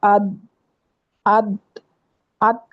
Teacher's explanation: زبان آپ کی ٹک جاتی ہے اوپر کے سامنے کے دانتوں کے جڑ کو. لیکن دال چونکہ حروف قلقلہ میں سے ہے اس لیے اس کو چھوڑ دیتے ہیں، زبان کو ٹکا کے نہیں رکھتے بلکہ زبان کو چھوڑ دیتے ہیں اس پہ رکھ کے جب دال ساکن ہوتی ہے.